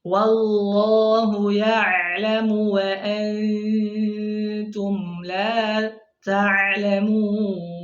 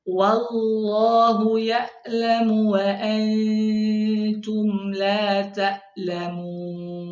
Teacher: adapun ain naik ke tengah tenggorokan agak menekan ya suaranya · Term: huruf ain